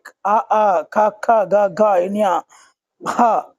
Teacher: ఇవి కంఠం నుండి వచ్చినవి అ క ఖ గ ఘ ఇన్య హ ఇవన్నీ కూడా కంఠం నుంచి వచ్చాయి కాబట్టి కంఠ్యాలు అని పిలుస్తాము